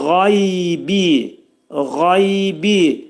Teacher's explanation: qayn hərfinin məxrəci boğazın yuxarı hissəsindən çıxarılacaq.